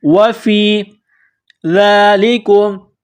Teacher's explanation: وَفِي ذَلِكُمْ واو زبر و فا یا زیر فی، فا کو یا کے ساتھ ملانا ہے، وَفِي ذَلِكُمْ ذال کے اوپر کڑا زبر ہے، 1 الف کے برابر کھینچیں گے